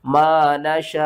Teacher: शीन मद खड़ा जबर शा, मद्दे मुत्तसिल है, 5 अलिफ के बराबर खींच कर पढ़ेंगे